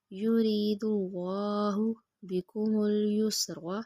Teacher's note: اللہ سے پہلے حرف کے اوپر پیش ہے اس لیے اللہ موٹا پڑھیں گے